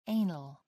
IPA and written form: ˈeɪnəl (anal)